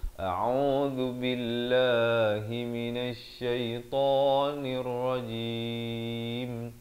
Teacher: Hamzah di pangkal kerongkong, ain di pertengahan kerongkong bari dhammah, zal di hujung lidah, dzu.